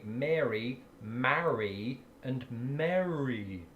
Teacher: I just pronounce them all Mary.